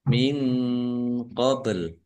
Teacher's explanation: nun sukun bertemu dengan huruf qof bacaan Ikhfa dibaca samar samar